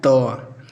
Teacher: बोलने में हमारी जो जिह्वा होती है दांतों को छूती है। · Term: दंत ध्वनि